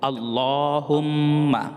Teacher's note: যেহেতু এখানে আল্লাহ শব্দের ডানে জবর হবে তাই এখানে লহ পোর করে পড়তে হবে